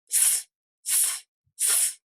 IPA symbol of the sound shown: s